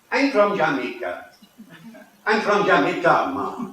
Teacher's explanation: syllable-timed rhythm, where the beats of rhythm come out equally on each syllable. So it's rat-tat-tat-tat-tat rather than tum-ti-tum-ti-tum.